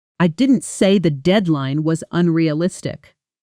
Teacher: If I stress the word unrealistic, it implies I might think it's difficult, just not impossible. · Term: sentence stress